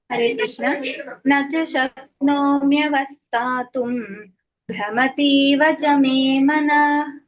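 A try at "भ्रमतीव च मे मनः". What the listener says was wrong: ಅಲ್ಲಿ ಭ್ರಮತಿವಚಮೇ ಮನಹಕಾರ ಇದೆ ಅದ ಹೇಳಬೇಕು ಮನಹ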